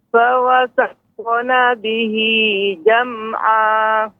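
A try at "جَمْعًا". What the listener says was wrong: Ainnya lebih ditampakkan Ibu. Jam'a.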